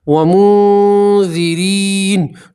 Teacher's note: نون سکین کے بعد ذال آیا ہے، ذال اکفا کے 15 حروف میں سے ہے، اس لیے آپ یہاں نون سکین کا اکفا کریں گے، ٹھیک ہے، اور ایک الف کے برابر گنہ بھی کریں گے۔